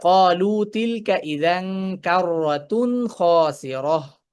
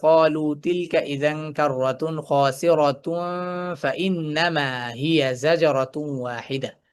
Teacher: সুকুন করে থামবো। তখন সেটা গোল হা হয়ে যাবে।